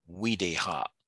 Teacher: the V sounds kind of gets converted to the W sound. It usually become wa, so it'll be, we are looking at words like Wideha.